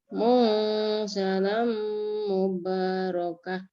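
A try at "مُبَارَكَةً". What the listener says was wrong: Mubarakah. K-nya satu. K saja, bukan kah. Nggak ada kahnya. Mubarakah.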